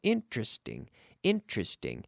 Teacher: most native speakers squeeze this into three syllables